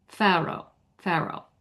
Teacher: So, you would pronounce that R. It links those two vowel sounds.